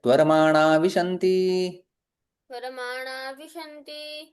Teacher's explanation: यहाँ पर विसर्ग का लोप के समान मान सकते हैं।